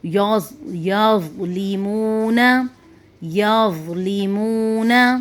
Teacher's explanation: زوا کی آواز موٹی اور نرم ہوتی ہے، جیسے کہ یظلمون یظلمون۔